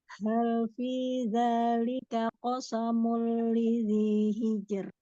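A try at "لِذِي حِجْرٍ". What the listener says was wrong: Huruf H-nya disempurnakan lagi tenggorokan tengah. Hijr. Ya, coba disempurnakan H-nya. Sempurnakan alirannya.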